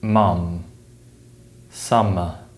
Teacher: the M sound is produced by blocking the flow of air through the mouth with the lips